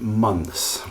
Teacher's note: you have a three consonant consonant cluster at the end of that word